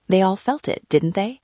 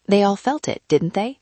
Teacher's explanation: With falling intonation — 'They all felt it, didn't they?' — this means you are quite sure and are just confirming. · With rising intonation — 'They all felt it, didn't they?' — this means you are genuinely asking.